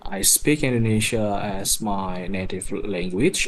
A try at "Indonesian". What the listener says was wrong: Yeah, and you really need to pronounce that N at the end of Indonesian, not Indonesia, because Indonesia is the country, right? So it's Indonesian as the adjective, right? Okay, that N has to be strong.